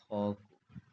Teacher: जब हम उसको बोलेंगे तो जो ध्वनि होगा ना उसमें हकार होगा ठीक है उसमें ह निकलेगा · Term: महाप्राण